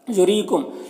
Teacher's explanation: را کے نیچے زیر را کو باریک پڑھنا ہے اور یہاں پر یا مدہ ہے اسے ایک الف کے برابر کھینچیں گے۔